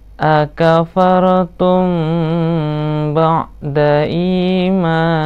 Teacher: Bab mim sukun ini mudah ya, karena cuma ada 3 saja pembahasannya, yaitu mim sukun bertemu ba, ikhfa safawi, dibaca samar-samar dengan menahan bibir, dengan menahan kedua bibir ya